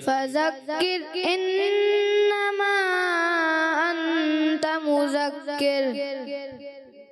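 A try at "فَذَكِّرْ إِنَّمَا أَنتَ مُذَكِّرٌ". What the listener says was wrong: کہیں احمد بھائی ذال جو ہے نا تھوڑا سا زا کی طرف فذک آپ زور دیتے ہیں، فذک ایسے ہو جاتا ہے، تو زور نہیں دینا، فذکر، ذال، ذال، ذالک، فذکر، اعوذ، ٹھیک ہے، ادھر بھی محسوس ہوا تھا۔ اچھا بسم اللہ الرحمن الرحیم میں بھی تھوڑا سا بسم اللہ رخ کی طرف، خا کی طرف ہلکا سا محسوس ہوا، تو آپ نے ان چیزوں کو درست کرنا ہے، ٹھیک ہے نا، تو کوشش کریں گے تو آپ بھی درست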